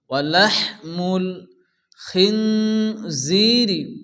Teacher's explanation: নুন সাকিনের পরে হরফে ইকফার 15টি অক্ষরের মধ্যে যা আসে এখানে এক আলিফ গুণনা হবে। খিনজিরি, জায়াজের জি ইয়ামাদ্দা এক আলিফ টান হবে।